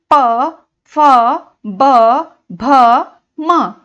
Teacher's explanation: जब हम इन शब्दों को बोलते हैं तो ऊपर और नीचे दोनों के होठ आपस में मिलते हैं, टकराते हैं, इसलिए हम इसे ओष्ठ वर्ण कहते हैं।